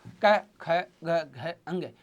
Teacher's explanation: तो इसका क वर्ग का उच्चारण स्थान अपन क्या मानते हैं? कंठ।